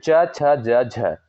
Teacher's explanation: च, छ, ज, झ, ये आपके जो वर्ड होते हैं ये तालु से उच्चारित होने वाले वर्ड होते हैं